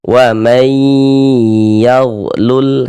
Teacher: Maka ini kita baca wai di bagian may di bagian situnya itu kita tahan sejenak suara kita. Kita gunahkan kira-kira sepanjang dua harakat. · Dibaca dengan cara diidgamkan kemudian dighunahkan, didengungkan. Maka ini kita baca wai di bagian may di bagian situnya itu kita tahan sejenak suara kita. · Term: idgham ghunah, idgham bi gunnah